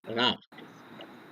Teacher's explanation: ra is a soft rolling R sound